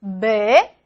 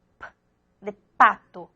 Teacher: vibran las cuerdas vocales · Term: sonora